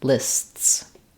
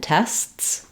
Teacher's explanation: my tongue is starting in the S position it's stopping the air for the T and then bursting back into the S position um so there's a little Interruption between the S sounds um